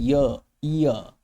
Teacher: शुरुआत में हम बोलते हैं अगर आप बहुत ध्यान से देखोगे तो इ का उच्चारण होता है। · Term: अर्ध स्वर